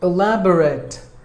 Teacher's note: in this word and we have to stress the second syllable lab should be given more volume than the rest of the syllables